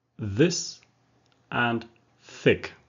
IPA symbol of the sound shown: θ ð